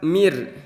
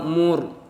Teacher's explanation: ada huruf yang berharakat kasrah bertemu dengan ro yang mati maka karena sebelumnya ada harokat kasrah maka cara bacanya itu harus ditipiskan atau tarqiq